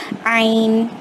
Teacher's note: اس کے بعد عین جو ہے، جس طرح جو ہا ہے، جیم کے بعد ہا ہے، اس کو ہم نے کس طرح حلق کے درمیانی حصے سے ادا کیا تھا ویسے ہی عین کو بھی حلق کے درمیانی حصے سے ادا کریں گے، ایک دم زیادہ شدید حلق والی آواز میں. کیسے؟